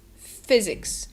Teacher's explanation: the y sound is not a yes sound but it's like a shortened i sound